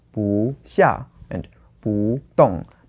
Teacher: if we have 不 together with a fourth tone like here's 下 and 動 We have to change the 不 to the second tone